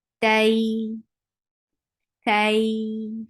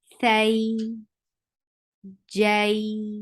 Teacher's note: It's ta fatha, ta, ta, and then ta should be attached, joined with ya, tay, and it should take 2 counts long. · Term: Leen